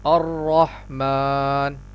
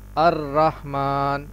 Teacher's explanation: سب سے پہلے وہ غلطی جو را سے متعلق ہے، یعنی الرحمن، یہاں را میں اس بات کا خیال رکھیں کہ را پر پڑھا جائے گا، اس لیے کہ را پر زبر ہے، اور جب پر را پر زبر ہوتا ہے تو را کو پر پڑھا جاتا ہے، یعنی اس کو اس طرح پڑھیں گے الرحمن، اور اس طرح بالکل نہیں پڑھیں گے الرحمن، یعنی را کو بالکل باریک نہیں پڑھیں گے۔